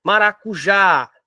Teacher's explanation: a sílaba tônica da palavra maracujá é o já, é a última